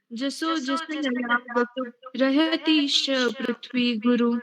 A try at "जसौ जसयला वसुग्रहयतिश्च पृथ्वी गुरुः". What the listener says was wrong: नहीं बेटा, गलत कर दिया है। रहयतीश्च, इतना सॉफ्ट होने के लिए किसने बोला आपको? रहयतिश्च बोलो, बोलो तिश्च।